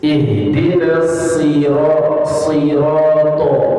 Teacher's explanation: Hanya dia sifatnya yang berbeda. Walaupun tempat keluarnya to, dal sama ta itu sama, tapi sifatnya yang berbeda. To itu dibaca tebal.